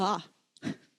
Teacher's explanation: This second ah is an ah that has a smooth start.